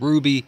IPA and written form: ˈruːbi (RWBY)